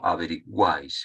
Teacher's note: la intensidad recaiga sobre la abierta · pronunciar en una sola sílaba tres vocales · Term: triptongo